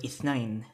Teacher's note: that interdental fricative, th, makes the voiceless interdental fricative